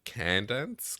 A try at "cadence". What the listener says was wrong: It's it's it's it's, it's cadence. Cadence. There's no end there. Cadence. Cadence. Cadence.